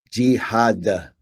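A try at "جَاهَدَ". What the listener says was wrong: So we're not saying G because it's a sound.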